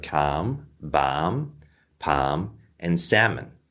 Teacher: most Americans will say it without the L's